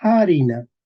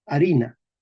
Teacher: al comienzo de una palabra se pierde la H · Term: la pérdida de la H